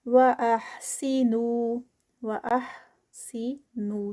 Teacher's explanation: نو پہ 2 counts ہوں گے. اسٹاپ پر ہے اور یہ جب مد منفصل اور متصل اسٹاپ پر ہوتی ہیں تو اس کے 4 counts کی بجائے ہم 2 counts کرتے ہیں.